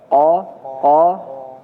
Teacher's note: Ya d qo ya do qo hati-hati di qof ya. Qo qo dia jahr jelas tidak ada desisnya